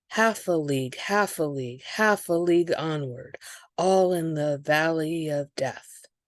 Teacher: The Charge of the Light Brigade is in dactyls stressed unstressed unstressed.